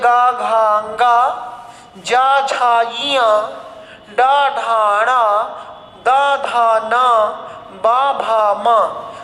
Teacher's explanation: 15 ध्वनियां अंत की 3 से लेकर 5 तक की ध्वनियां सघोष ध्वनियां हैं या कंपन के साथ हैं